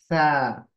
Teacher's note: जबान की नोक ऊपर के दात के किनारे को लगेगी तो सा की आवाज आएगी हवा बाहर निकलेगी ठीक है तो ड्राई साउंड है सीन की साउंड नहीं है